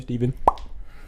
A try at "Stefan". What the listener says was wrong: And it's with a PH, not a V.